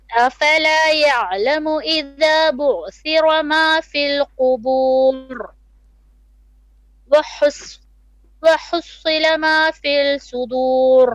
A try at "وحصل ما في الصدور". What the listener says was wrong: ما في الصدور, not في ما في الصدور, not في. Don't stretch the في again.